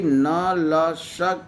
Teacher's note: न, ल, स के उच्चारण में जीभ दांत को स्पर्श न करके दांत से लगे हुए मसूड़े को स्पर्श करती है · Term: वर्ष्य वर्ण